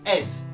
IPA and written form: ed (-ED)